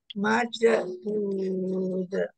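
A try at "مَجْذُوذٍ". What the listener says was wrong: majud jangan dipantulkan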